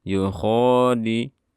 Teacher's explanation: dal syiddah, jadi suaranya tidak dialirkan